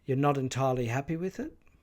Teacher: the first syllable of the word happy is the point at which the rising pitch Contour begins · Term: emphasis